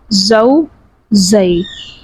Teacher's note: زا جو ہے وہ حروف صفیریہ میں سے ہے، یعنی یہ سختی کے ساتھ پڑھا جائے گا